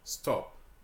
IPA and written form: stɒp (stop)